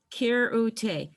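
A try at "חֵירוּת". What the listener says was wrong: Okay, but it's a chaf, not a kaf. So it's going to be hirute.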